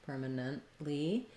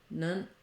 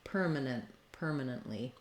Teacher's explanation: I'm just going to stop the air on the T and go right into the E sound, nently. And in words that have N-A-N-T or N-E-N-T, permanently, we're going to have a syllabic N as well. So a long per, then a short ma, nun, just kind of almost no vowel.